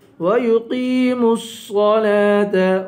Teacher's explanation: صاد کو پر پڑھیں گے، لام پر کھڑا زبر ہے، اس لام کو ایک الف کے برابر کھینچ کر پڑھیں گے